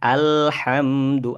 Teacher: Jadi bacaan yang makhrajnya ada di pangkal tenggorokan di Hamzah yakni ee bagian tadi alhalq.